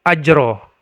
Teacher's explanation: ajron maka ajronnya itu merupakan Mad ewat maka dia dibaca ajro diganti tanwinnya menjadi fathah saja dan dibaca sepanjang dua harakat · diubah fathah tanwinnya tanwinnya menjadi fathah saja jadi dibaca ajron adzima kalau kita berhenti pada ajron maka dibaca ajro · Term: mad iwad